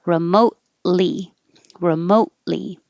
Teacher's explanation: You don't say the T because the T and the L are made in the same place. Remote, your tongue goes up there and hold it there when you release it for the L.